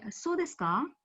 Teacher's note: It's a rising intonation. So whenever they say so desu ka, it's a rising intonation.